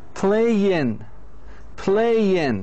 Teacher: they don't pronounce the last G they don't say playing like in Arabic they say play play Young so the gate is lightly pronounced · In English, by the way, the native speakers, they don't pronounce the last g. يعني they don't say playing like in Arabic.